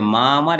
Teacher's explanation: মা আমার একসাথে বলতে গেলে মাঝখানে একটা অন্তস্থ অধ্বনির একটা আগমন ঘটে। মা আমার, হ্যাঁ, বলছে এখানে মাঝখানে একটা অন্তস্থ অ শোনা যাচ্ছে, তাই এটার নাম হচ্ছে অশ্রুতি, অর্থাৎ অন্তস্থ অ শোনা যায়।